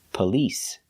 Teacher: the stress is on the second syllable police it's not on the first syllable